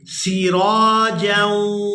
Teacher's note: یہاں پر جیم کو واو مشدد کے ساتھ ملائیں گے تو غنہ کریں گے